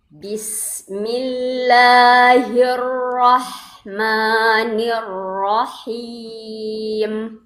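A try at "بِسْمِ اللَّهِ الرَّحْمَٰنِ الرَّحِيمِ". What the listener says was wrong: Itu nggak naik pangkal lidahnya tuh, Bu. Coba bedain suaranya. Bismillahirrahmanirrahim dengan hirro beda. Hirro dengan hirro itu beda.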